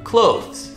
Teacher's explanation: the two consonant sounds back to back it's the voice th the and then Z right after